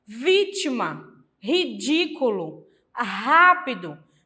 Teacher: essas palavras proparoxítonas em que a antepenúltima sílaba é a mais forte